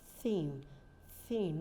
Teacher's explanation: so for the silent th your tongue comes out